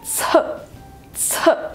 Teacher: этот звук произносится с придыханием